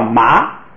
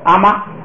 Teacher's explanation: 后边这个字母本来是低声调，就是从低处往上升的